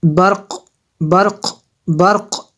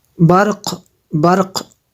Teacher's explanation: قاف جو ہے قلقلہ ہے اور ساکن ہے تو مشدد نہیں ہے تو اس کو اتنے جماؤں کے ساتھ ہم نے نہیں پڑھنا ہے، قلقلہ ظاہر ہوگا، برق برق ایسے پڑھیں گے۔